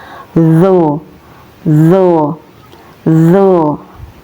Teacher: huruf do keluar dari ujung lidah dan bertepatan dengan gigi seri atas. Cara melafalkannya doo doo doo. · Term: huruf zo